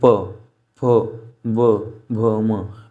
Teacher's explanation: इन पांचों को बोलने पर हमारे जो होठ है वो क्लोज और ओपन हो रहे हैं। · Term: ओष्ठ व्यंजन